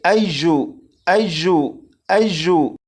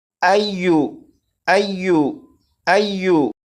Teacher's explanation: اور یہاں پر دیکھیں یہ ہے یا کے اوپر تشدید ہے، تو اس یا کو اس طرح نہیں پڑھیں گے ایجو ایجو ایجو، بلکہ یا کو نرمی سے پڑھیں گے، جیسے ایو ایو ایو